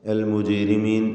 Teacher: ജീമിൻ്റെ സുക്കൂൻ ഖൽഖല സുഗ്റ നൽകി ശബ്ദം ഹറക്കത്ത് പോലെ ചലിപ്പിക്കണം.